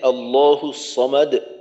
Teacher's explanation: আল্লাহ শব্দের লাম মোটা এবং এক আলিফ টানতে হবে